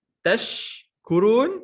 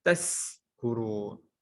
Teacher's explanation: Tashkurun, shin, kita tukar dengan sin.